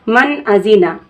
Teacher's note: اگر ہم روک کر پڑھ دیے جیسے من ازینہ تو یہ غنہ ہو گیا، تو ہمیں غنہ نہیں کرنا ہے، ہمیں اظہار کر کے پڑھنا ہے، اس لیے ہم نون کی آواز کو ظاہر کر کے پڑھیں گے جلدی سے بغیر ناک میں روکے